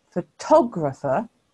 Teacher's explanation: the stress mark has shifted to the second syllable because we say photographer